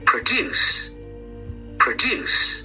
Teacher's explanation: Produce is read on the second syllable